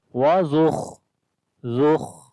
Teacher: خا کو موٹا پڑھیں گے، حروف استعلا میں سے ہے، اور دوسرا خا کے اندر صفت ہمس بھی ہے، یعنی کہ سانس جاری ہوتا ہے